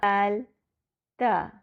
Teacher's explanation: دال اور تا مرقق حروف ہیں، ان کے لیے زبان اپنی اصل حالت میں رہتی ہے۔ ان دونوں کا مخرج بالکل ایک ہی ہے، مگر ان میں فرق ان کی صفات کی وجہ سے ہے۔